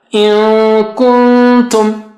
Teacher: First nun sakina will be close to kaf, second nun sakina will be close to ta. In kuntum. You will get control inshallah as you practice. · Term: ikhfas